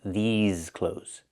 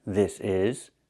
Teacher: these has the long E like green beans, and the Z sound like in zebra with vibration